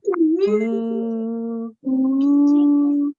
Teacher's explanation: just like with an alif, with an inverted dhamma, you will say ooh for 2 seconds. It's the same sound with the hamza.